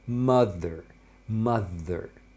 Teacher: Então você vai ter a vibração das cordas vocais. Aqui também vai acontecer isso.